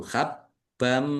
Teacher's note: idgham masuk dengan mendengung mendengung mim ditandai mimnya ada tasdidnya mim tasdid dibaca Baca mendengung ditahan ya sabar.